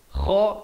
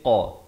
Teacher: kha di hujung kerongkong, qaf di pangkal lidah